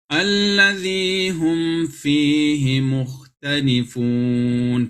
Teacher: Ingat, harus jelas. Mimnya itu harus jelas. Tutup mulut dulu, baru dimasuki huruf fa. Dan tidak boleh ditahan. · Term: Izhar syafawi